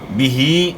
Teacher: ہا کو اپنے مخرج سے یعنی گلے کے آخر سے ادا کرنا ہے. ہا کے نیچے کھڑی زیر ہے، اس کو آپ نے تھوڑا کھینچنا ہے.